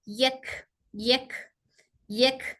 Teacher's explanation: काफ के अंदर सिफत हमस है तो इसलिए इसको एयर फ्लो के साथ पढ़ रहे यक यक यक साकिन में एयर फ्लो अच्छे से सुनाई देती